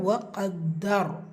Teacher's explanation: முந்தைய இடத்துல ஃபத்தா இருக்கிறனால அந்த ரா சுக்கூனை நீங்கள் வல்லினப்படுத்தி ஓதணும். அதனால் வகத்தர் அப்படி முடிக்கணும்.